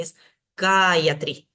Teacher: En la penúltima podría, pero es una sílaba liviana, la A es corta. Y tengo antes una sílaba más que además tiene una A larga, entonces voy a poner el acento ahí.